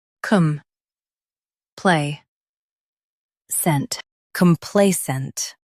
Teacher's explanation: Stress play and keep come soft.